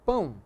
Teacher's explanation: Não, você diz pão. O O tem som de U. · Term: semivogal